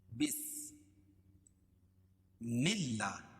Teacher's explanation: اللہ کے لام کے اوپر کھڑا زبر ہے، کھڑا زبر قائم مقام الف مدہ کے، اس کو ایک الف کے برابر کھینچ کر پڑھیں گے